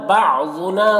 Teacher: ربنا را کو پر پڑھیں گے اور یہاں پر بعضنا ضاد حروف مستعلیہ میں سے پر پڑھنا ہے